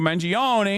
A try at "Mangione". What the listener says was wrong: I'm sorry, it's pronounced Mangione. The E is silent. Luigi's Mangione.